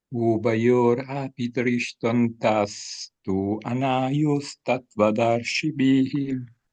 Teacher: you pronounce the tu there almost as if it were a vowel. So originally it was a vowel, is tu anaios, becomes then by Santi tuanaios.